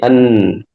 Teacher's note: nun ujung lisan menempel kepada gusi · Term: huruf nun